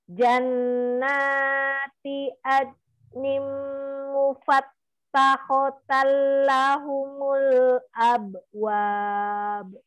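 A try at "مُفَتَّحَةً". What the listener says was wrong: Mufattaha, bukan mufattaho. Mufattaha.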